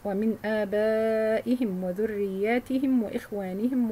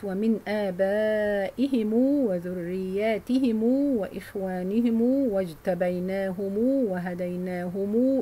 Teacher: Reading the plural meme by lengthening of a temporary dhamma on the plural meme into a waw of two vowel counts.